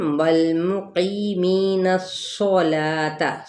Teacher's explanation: قی پہ یا مدہ، می پہ بھی یا مدہ، یعنی ایک الف یا 2 حرکت ہم کھینچیں گے. اور نون کی زبر کو صاد کے ساتھ ملائیں گے تو صاد پور پڑا جائے گا